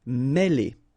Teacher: Okay, remember, accent circumflex here on the top of E, and it will give you the sound E, really opened